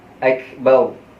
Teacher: seakan-akan muncung sedikit supaya ditebalkan huruf ra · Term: ra tebal